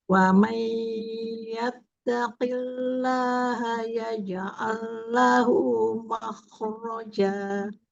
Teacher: dari wamai tempo gunnahnya jangan terlalu cepat ya. Lamakan sedikit.